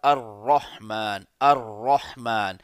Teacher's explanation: اس کی تفصیل کچھ اس طرح سے ہے کہ اگر را کے اوپر زبر ہو اور ساتھ شد ہو تو اس کو ہم لوگ ٹیکنیکلی بولیں گے مفتوحہ مشددہ، جیسے الرحمن۔ تو را پر جب زبر ہوگا اور ساتھ شد ہوگا تو اس کو موٹا کر کے پڑھا جائے گا